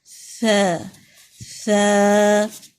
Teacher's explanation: زبان کی نوک سامنے کے 2 دانتوں سے لگے گی, ٹھیک ہے, اور تھوڑا سا باہر کی طرف نکلے گی. ث, اوپر والے 2 دانتوں کے ساتھ زبان لگائیں اور ذرا سا باہر نکال دیں. ث ث, کیونکہ الف ہے تو تھوڑا اسٹریچ کریں گے.